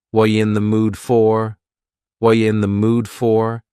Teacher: but notice what's happening what are you in the mood for the word r is gone and the word you has been reduced to yah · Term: reduction